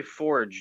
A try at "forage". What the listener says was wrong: You know, you have to enunciate the orage, right?